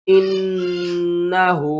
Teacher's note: نون مشدد ہے تو نون کے اوپر آپ نے غنہ کرنا ہے، اور واو کو ہم نے تا کے ساتھ ملانا ہے، پھر اس تا کو اس واو کے ساتھ ملانا ہے، دونوں کے اوپر سختی کریں گے۔